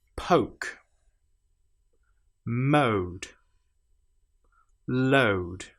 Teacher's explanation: When we add an e at the end, this changes to don't. So again, it starts with uh and ends in oo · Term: e affected o